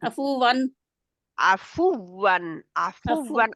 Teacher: वाव जी के लिए होंठ आप पूरे गोल करेंगे और रा जो आगे वाली है उसको आप मोटा रखेंगे